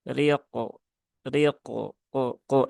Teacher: pantulan qafnya jangan menjadi ke ya, tapi ko ya